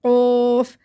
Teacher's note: قوف کو خوب موٹا منہ بھر کے پڑھنا ہے، جوف بنا کے